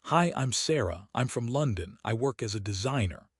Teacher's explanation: The grammar words I'm from as a are weak and fast. The content words are loud and slow. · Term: stress the content words